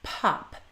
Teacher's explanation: say a word like pop pop it shouldn't sound like pop it needs to have this little burst of air before the O